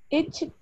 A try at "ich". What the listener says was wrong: It's not ich, it, ish.